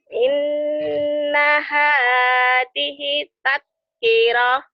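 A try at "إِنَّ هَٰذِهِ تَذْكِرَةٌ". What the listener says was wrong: zal ya rapuh sedikit. Inna hadhihi hinya panjang. Marsilah qasirah.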